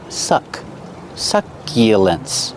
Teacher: pronunciation use the short uh like up and cup